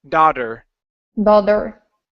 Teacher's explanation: you want to pronounce a flap T, saying da-der, nice and hard against the top of your mouth.